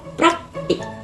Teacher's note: Diucapkan praktik. P dan R langsung berurutan diucapkan. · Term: cluster